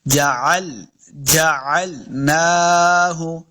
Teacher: عین زبر لام ال نہیں کرنا، یعنی حمزہ نہیں پڑھیں گے. عین کو الگ سے ایک مخرج ہے، حلق کے نچلے درمیان والے حصے سے عین کا مخرج ادا ہوتا ہے